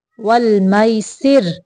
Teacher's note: रा को बारीक पढ़ेंगे